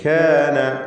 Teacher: ഷിദ്ദ, ഹംസ് തുടങ്ങിയ സിഫത്തുകളൊക്കെ കാഫിനുണ്ട്